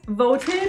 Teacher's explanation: The verb vote ends in a t sound, so we pronounced the ed syllable.